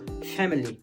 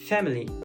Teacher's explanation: ce i, il existe, mais on le zappe un petit peu, on le dit rapidement. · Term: i neutre